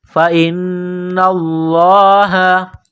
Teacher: لفظ اللہ کے نام سے پہلے زبر ہے، موٹا کرنا ہے لفظ اللہ کے نام کو